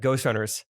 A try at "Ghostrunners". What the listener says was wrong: Honestly, when you said Ghostrunners, you kind of slurred through it and it kind of sounded like you said Ghost Sweaters. Ghostrunners.